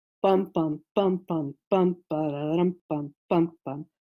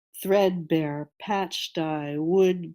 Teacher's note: the three syllable foot the longer foot is snuck in the middle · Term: dactylic foot